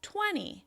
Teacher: So the 20 at the end, the E, is much quieter. It's less loud, less long, and less high in pitch, right? It's less obvious.